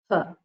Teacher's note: ha is more or less breath coming out of the mouth. So it is called aspirate.